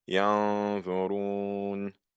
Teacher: The original pronunciation would be ينظرون, but I'm saying ينظرون. So you're not hearing the N in ينظرون. So that's what's meant here by إخفاء. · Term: hiding